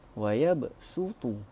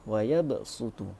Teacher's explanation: Tariq Asy-Syatibi membacanya dengan huruf sin. Huruf sad digantikan dengan huruf sin. Jadi bacaannya akan jadi seperti wa yabsutu.